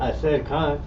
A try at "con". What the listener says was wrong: Like yeah, you ain't saying with no firmness though. You ain't say it with no manly fortitude. You just say it with a manly stomach. You said it like you barely want to agree. You might as well said no. The way how you coming off with so much effeminacy.